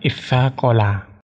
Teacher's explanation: huruf taknya pada lafaz tasaqala itu diganti dengan huruf sa, karena taknya tersebut berdampingan dengan sa dan kedua huruf tersebut mempunyai kedekatan dalam segi makhrajnya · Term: diidghamkan